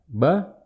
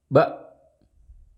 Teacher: Saat kita mengucapkan ba, pita suara masih terbuka. Lalu saat masuk ke hamzah sukun, langsung tutup. Ba. Dihentak seperti itu ya.